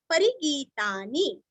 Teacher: री रस्व गी दीर्घ और नीरस्व